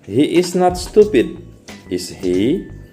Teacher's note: untuk bertanya atau untuk mengkonfirmasi mengenai suatu pernyataan ini dilafalkan dengan nada yang jatuh